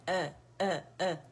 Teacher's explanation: अलजौफ से अदा नहीं होता, अखसुल हल्क से अदा होता है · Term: हमजा